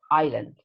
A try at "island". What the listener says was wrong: See, without the S, island, no